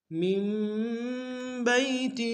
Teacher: بئی میں یا لین ہے بغیر کھینچے پڑیں گے